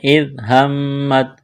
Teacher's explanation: اِذْ هَمَّتْ طَائِفَتَانِ مِنْكُمْ أَنْ تَفْشَلَا وَاللَّهُ وَلِيُّهُمَا، ذال کو نرم کرنا ہے۔ اِذْ ہمت، میم مشدد پر غنہ کریں گے